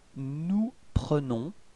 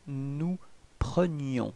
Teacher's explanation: the only way to make the difference between présent and imparfait, it's this I. So the y sound, okay? So for the present form, it's nous prenons.